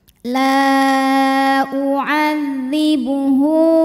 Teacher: Maka lamnya kita panjangkan, boleh 4 boleh 5 harokat. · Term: mad jaiz munfasil